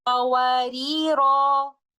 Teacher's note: When stopping at the word qawarira in ayah number 15, we stop with an alif mad